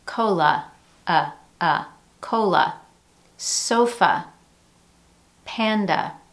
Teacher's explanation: In words that have more than one syllable and end in the A vowel sound, that final A is typically reduced to a schwa sound.